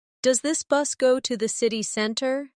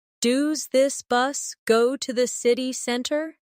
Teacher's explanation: In fast speech, does this often sounds like dooz this.